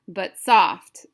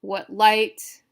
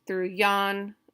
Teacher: So we have unstressed, stressed in each of our 5 feet, which would equal iambic pentameter, and that's what iambic pentameter is.